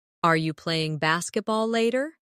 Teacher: In fast speech, are you can sound like are ya